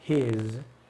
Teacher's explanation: His, perdón, con z al final, his. Acá vamos a utilizar esta pronunciación cuando queramos nosotros marcar que es de él y no de ella, por ejemplo, ¿sí?